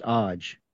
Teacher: So the A at the end is not pronounced.